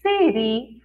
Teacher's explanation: Já a palavra siri tem um som mais aberto, mais forte, então nós escrevemos com a letrinha I.